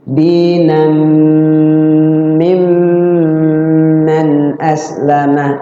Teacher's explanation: Di mimnya itu di idgham bigunah dan idgham mimi